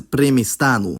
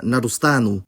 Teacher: the [ɲʧ] part changes to [st] before the personal suffix